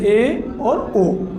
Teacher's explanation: ए और ओ में हमारा आधा मुख बंद रहता है, ये आते हैं हमारे अर्ध समृद्ध में।